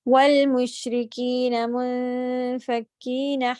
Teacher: वल होंठ गोल करके पढ़ना है। वल मुशरिकीन, जहाँ पे पेश आ रहे हैं, दम्मा है, उनको गोल कीजिए।